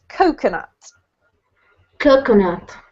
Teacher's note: Coconut has the emphasis on the first syllable, so it's coconut.